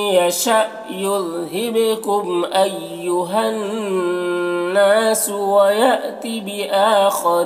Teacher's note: अय्युहन्नास, हा को नून से मिलाकर पढ़ेंगे, तो ये अलिफ नहीं पढ़ा जाएगा, ठीक है। नून मुशद्दद गुन्ना होगा, और अलिफ मद्दा है, तो इसे एक अलिफ के बराबर खींचेंगे। वयाती, यहाँ पर भी हमज़ा साकिना है, झटका लगेगा।